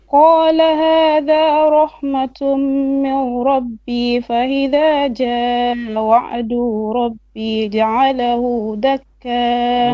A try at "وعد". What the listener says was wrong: وعد, short vowel, don't stretch.